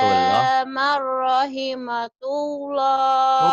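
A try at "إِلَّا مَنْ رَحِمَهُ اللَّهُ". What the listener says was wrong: Bukan ta ini mangga ada titiknya. ha. Illa marrahimahullah, bukan tullah ya.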